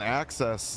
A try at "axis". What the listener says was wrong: It sounds like you're saying access, not axis.